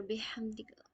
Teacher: ہا کو حلق سے بہترین آواز میں ادا کرنی ہے کہ ہوا کا فلو اندر سے باہر کی اور ہو